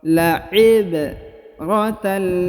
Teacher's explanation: Huruf ba berharokat sukun ya, maka dibaca pantul atau qalqalah